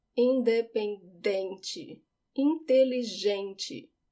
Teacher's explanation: In Portuguese, it's on the second to last syllable, dem. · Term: stress